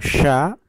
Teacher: sya hembusannya lebih ke dalam, jadi tidak menembus ke tangan.